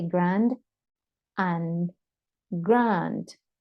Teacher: we have to prolong a little bit more the sound of the ah at the end